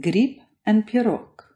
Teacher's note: This happens in two spots, one at the end of words where all voiced consonants will turn into unvoiced ones, as in grip and pirog, which are spelled with voiced consonants at the end and pronounced unvoiced